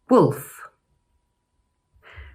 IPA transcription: ʊ